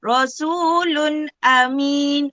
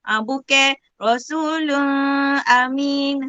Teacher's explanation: Mesti dibaca dengan terang dan jelas tanpa dengung. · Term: izhar halki